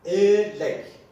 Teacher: E harfini biz E ile I arası bir sestir arkadaşlar.